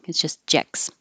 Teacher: Forget about that T. It's just jex.